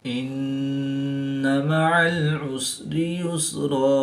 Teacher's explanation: 2 زبر کی تنوین کو وقف کی حالت میں الف مدہ سے تبدیل کر کے پڑھیں گے